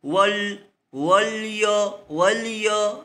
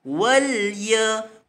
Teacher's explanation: Maka yang tepat adalah wal ya, lam itu dinipiskan.